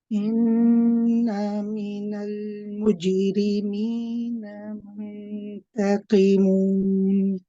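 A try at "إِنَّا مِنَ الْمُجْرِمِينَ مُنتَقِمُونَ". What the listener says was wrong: Try not to rush the inna. Take your time. Do the gunna, but then also do the alif. Don't forget the alif.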